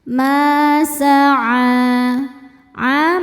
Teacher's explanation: mad thobi muqaddar Karena ada ain dengan harakat fathah panjang. Cara bacanya panjang dua harakat.